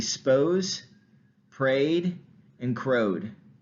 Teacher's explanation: notice that that um schwa sound um can be deleted